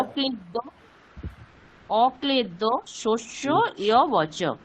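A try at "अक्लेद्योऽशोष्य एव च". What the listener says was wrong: না ইয়ব নয়, একার আছে, জাস্ট এ বচন। অক্লেদ্য শস্য এবচ।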